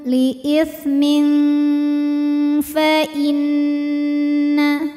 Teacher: Ikhfa awsat karena ada tanwin kasrah yang menghadapi huruf fa. Maka tanwinnya ini dibunyikan samar-samar, siap-siap menuju makhraj huruf fa disertai bunyi dengungan. Li'ithmin, samar dan dengungannya sama, kita siap-siap menyentuhkan ujung 2 gigi seri atas ke bibir bawah bagian dalam. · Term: ikhfa hakiki